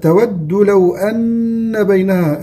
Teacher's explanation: طيب من سوء، النون في من سوء النون مخفاة، تود لو أن بينها، النون مشددة غنة بمقدار حركتين